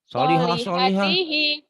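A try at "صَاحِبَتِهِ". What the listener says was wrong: Lamnya dari mana? Nggak ada lam. Ini mah alif. Ini kan nggak. Kalau lam itu kiri kanan oke. Ini kan nggak bisa. Tuh nggak bisa nyambung ke huruf berikutnya. Ini alif ya. Sohibatihi. Sohibatihi. Sohibatihi. Tekan di madnya ya. Ini panjang karena ada alif nih matobi'i. Ini panjang karena masih qasiroh. Harusnya sohibati gitu.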